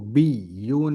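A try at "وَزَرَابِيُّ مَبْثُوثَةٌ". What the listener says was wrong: Mesti ditekan itu kan ada tasdid. Jadi bukan biyu tapi biyu mabsusah.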